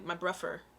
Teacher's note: you can change the th to the f sound which is rougher but i don't think anyone would say my buffer or maybe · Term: th fronting